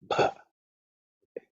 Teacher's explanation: bha is the fourth consonant, fourth letter in the pa varga, so it has to be aspirated.